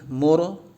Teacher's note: Maksudnya tebal, lidahnya bagian belakang terangkat ya ketika mengucapkan huruf ra